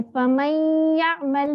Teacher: एक तो नाक में आवाज जाती है, उसके अलावा डबल उसको पढ़ते हैं, डबल हरकत के बराबर पढ़ते हैं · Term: गुन्ना